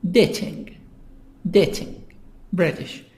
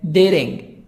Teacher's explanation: American, dating. T, soft D, between A and I, between two vowels.